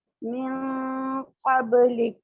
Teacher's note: काफ को हम्स के साथ अदा करेंगे, काफ आगे वक्फ हो रहा है, मिन क़ब्लिक। · लाम के नीचे जेर है तो नीचे जो जॉ लाइन है उसको नीचे की तरफ लेके जाएंगे और काफ को हम्स के साथ अदा करेंगे